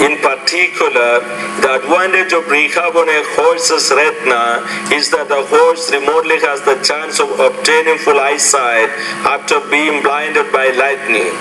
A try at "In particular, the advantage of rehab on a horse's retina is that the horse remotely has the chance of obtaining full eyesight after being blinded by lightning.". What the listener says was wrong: Your tone's still not good, but your pausing is actually pretty good there. You're grouping certain ideas together. Just remember, At the end of that first thought group, the tone is going to rise a little bit.